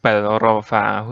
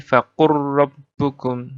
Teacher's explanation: cara membacanya adalah dengan mengabaikan huruf pertama dan membaca huruf kedua secara tasydid, bertasydid. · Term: idgham mutaqarribain